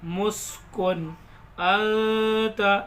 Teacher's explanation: कुन अंता में गुन्ना नहीं होगा, यह इजहार होगा।